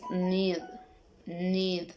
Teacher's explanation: Characteristic alveolars, nasal, and voice.